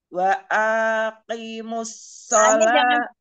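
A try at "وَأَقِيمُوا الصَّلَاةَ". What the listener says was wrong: Umi apa A-nya jangan panjang, kofnya yang panjang.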